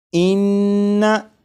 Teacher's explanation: नून मुशद्दद की अदायगी के वक्त ज़बान तालू से लगेगी, इस बात पर गौर करिएगा।